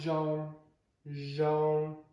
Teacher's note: Z is like the SH sound, but you use your voice. Zh, like the word nya, zhong, which means good.